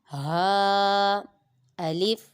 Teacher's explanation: یہ ہا حروف حلقیہ اور یہ حلق کے نیچے والے حصے سے ادا ہوتا ہے